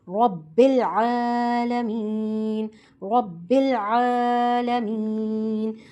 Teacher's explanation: زبر ہے تو ہم را کو موٹا پڑھیں گے. با پر تشدید ہے تو ہم دونوں کو ملاتے ہوئے ربل مضبوطی کے ساتھ، را کو پر اور با کو مضبوطی کے ساتھ ملاتے ہوئے پڑھیں گے.